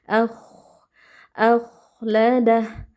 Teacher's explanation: huruf K tebal kita baca dengan mengangkat pangkal lidah disertai adanya aliran suara dan nafas